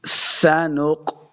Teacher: سنق آگے نون کو قاف کے ساتھ ملانا ہے. یہ جو قاف ہے یہ حروف مستعلیہ سے ہے، اس کو ہمیشہ موٹا کر کے پڑھنا ہے، پر کر کے پڑھنا ہے.